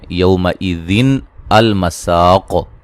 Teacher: یہ اصل میں یومئذ المساق ایسے تھا، تو ملانے کی صورت میں حمزہ وصلی درمیان میں سے گر گیا، اور یہ نون تنوین کی جو نون ہے اس کو زیر لگا کے پڑھا گیا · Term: نون قطنی